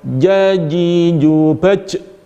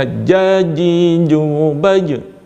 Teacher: Huruf jim ini dia bersifat jahr, tahan nafas ketika dia diucapkan.